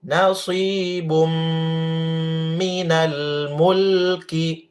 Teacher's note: baris dua ketemu mim ya tahan dikasih lama jangan cepat